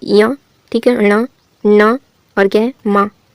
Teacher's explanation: इनके उच्चारण में वायु ध्वनि मुख के साथ साथ नाक से भी निकलती है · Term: अनुनासिक वर्ण